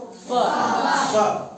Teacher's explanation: जब प तुम बोलेगा तो तुम्हारा मुंह सटता है